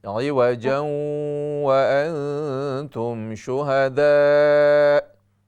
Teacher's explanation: عوجا یہاں پر غنہ کیجئے، ادغام مع الغنہ ہے